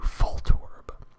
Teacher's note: voice it's an f so you have to do full torb if you are whispering you can't whisper a v it's an f